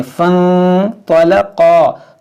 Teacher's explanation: इस अलिफ को नहीं पढ़ेंगे, इस फ़ा को नून से मिलाएंगे और नून साकिन के बाद तो है तो यहाँ पर इख्फा करेंगे